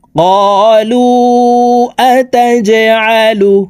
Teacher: জিম কলকলার হরফ নিচের দিকে ধাবিত করে ধাক্কা দিয়ে উচ্চারণ করতে হবে